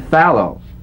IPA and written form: ˈfæloʊ (fallow)